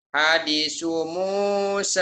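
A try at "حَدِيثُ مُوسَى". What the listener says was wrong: Salah panjang pendeknya yang mikirlah. Ya, panjang pendeknya. Ya, sa-nya jungli deh ya. Hadithu Musa.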